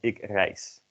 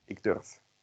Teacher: And the last rule is that at the end of the crude stem, Z becomes an S and a V becomes an F. Because in Dutch, we don't like having voiced consonants at the end of words or syllables